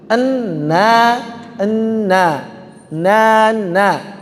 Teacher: Contoh, nana tidak kita ucapkan nama. N-nya ada dari hidung, n. Tapi ketika sudah buka mulutnya, na dari mulut.